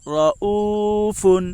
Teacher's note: را کے اوپر زبر ہے اس لیے را پر ہوگی. واو ساکن سے پہلے پیش ہے اس لیے واو مدہ ہوگا. واو مدہ کو ایک الف کے برابر کھینچ کر پڑھیں. معروف پڑھیں، مجہول آواز سے بچیں.